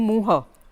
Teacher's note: જે સંસ્કૃતની રીતે મહાપ્રાણ કહેવાય, ખ ઘ ધ ભ ફ, તો એ બધામાં પરિવર્તન હમાં થઈ જતું